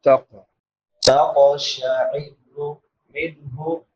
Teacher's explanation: نون ساکن کے بعد حروف حلقی میں سے ہا ہے تو یہاں پہ اظہار ہوگا، اظہار یعنی حرف کو ظاہر کر کے پڑھنا